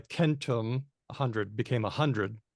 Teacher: There was a /k/ to /h/ thing, which is why CENTUM — hundred — became a HUNDRED in English.